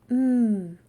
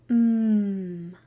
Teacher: when we say m our voice is on and we hold it out it is a continuous sound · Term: M sound